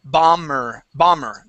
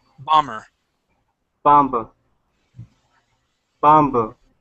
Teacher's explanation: the B is silent it does not make a sense okay we do not pronounce the b